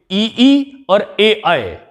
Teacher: ई और ए अय हमारे अग्र स्वर कहलाते हैं।